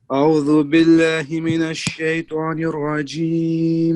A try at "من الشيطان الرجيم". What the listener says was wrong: من الشيطان, not طوا, من الشيطان الرجيم.